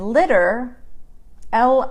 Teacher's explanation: So the T in litter, litter, is pronounced like a D instead of a T.